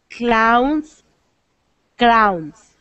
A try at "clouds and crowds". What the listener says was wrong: Okay, make sure you get the D on the end, because it almost sounds like you're saying, it almost sounds like you're saying clowns and crowns. So make sure you get the D.